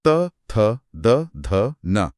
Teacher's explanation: जब त बोला जाता है, तो जीभ सीधे दांतों को छूती है। बिना दांतों को छुए यह अक्षर बोले ही नहीं जा सकते।